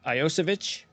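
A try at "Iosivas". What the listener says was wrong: Josivas. It's like Yo C Vash. I think you actually added an H, like an H at the end of it.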